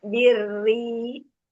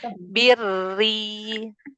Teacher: Semuanya berarti harus kasroh. Tipis semua.